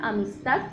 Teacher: El tono más fuerte de la voz, cuando pronunciamos esta palabra, amistad, lo hacemos en la última sílaba, ta. Es decir, que la palabra tiene acento, pero es prosódico porque no cumple con las reglas de las palabras agudas. · el acento recae sobre la última sílaba